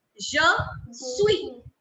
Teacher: I will keep the last S silent because consonants that come in the end in French are kept silent. We do not give them their sounds.